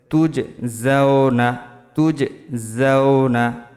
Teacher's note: তুজ কলকল হবে জিম কলকলা হরফ জিমের উপর জজম আছে